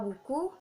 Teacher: Pada kata buku, bunyi U di tinggi, belakang, dan berbentuk bulat